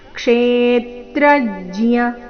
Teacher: ಕ್ಷೇತ್ರಜ್ಜ್ಯ ಮೊದಲನೇ ಎರಡು ಅಕ್ಷರಗಳ ಮೇಲೆ ಆಘಾತ